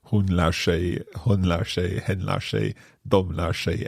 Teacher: we can hear the sh sound because the R and the S are running together